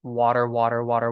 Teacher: the tip of your tongue lightly flaps against the roof of your mouth